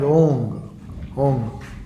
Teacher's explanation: somebody from Northeast, they pronounce Om as Ong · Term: Anuswara